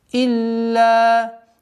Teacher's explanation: После удвоения долгота в размере двух огласовок фатхи.